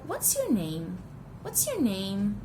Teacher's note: WH questions, information questions, might carry a rising tone to sound more polite.